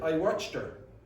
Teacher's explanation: But I didn't say the H.